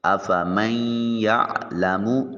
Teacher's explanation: افمن یعلم، تو آپ دیکھیں میم کو یا کے ساتھ ملاتے ہوئے بیچ میں سے جب ہم ناک میں آواز لے کے جاتے ہیں تو نون کی آواز محسوس ہو رہی ہوتی ہے، اس کو ادغام بالغنہ کہا جاتا ہے۔